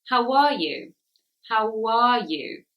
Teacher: The how is an ow sound, but the W sound actually comes in the middle.